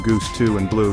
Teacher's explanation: Now high back vowels. U is a close back rounded vowel heard in goose 2 and blue. Your tongue is high and back lips rounded.